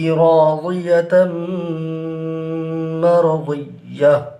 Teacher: یہاں پر تنوین کے بعد حروف یرملون میں سے میم ہے، یہاں پر ادغام ہوگا، اور ادغام کی صورت میں غنہ بھی ہوگا، یعنی ادغام مع الغنہ ہوگا۔